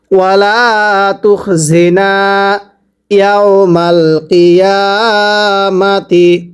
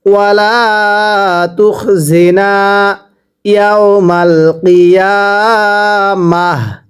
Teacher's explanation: তাহলে ওয়াকফ করলে ওয়াকফের সময় গোল তাটাকে হা বানায় পড়তে হয়